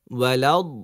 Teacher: ওয়াও খেয়াল আছে তো ঠোঁট গোল হবে